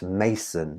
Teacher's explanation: the stress is on the first syllable so it's starting the poem strongly